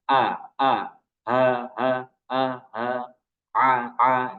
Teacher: semuanya itu makhrajnya ada ditenggorokan